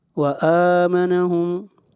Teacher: حمزہ کے اوپر کھڑی زبر ہے، اس کو ایک الف کے برابر کھینچ کر پڑھیں گے. وآمنہم یہاں پر میم ساکن کے بعد میم آ رہا ہے تو یہاں پر ادغام ہوگا، میم کو میم کے ساتھ ملا دیں گے.